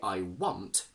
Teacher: So if I say I want, this t in want keeps the a fairly short